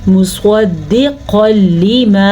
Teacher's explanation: صاد کو بھی پر کرنا ہے اور قاف کو بھی پر کرنا ہے، جبکہ یہاں پہ ادغام بلا غنہ کا قاعدہ ہو رہا ہے، غنہ نہیں کرنا، اس کا یہ مطلب ہے.